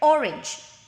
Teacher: In the word orange, the stress is on the first syllable. Okay, the one that I underlined and capitalized, the letter O.